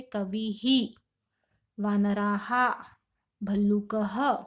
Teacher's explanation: विसर्ग जिस स्वर के बाद आता है उसी की तरह उच्चारित होता है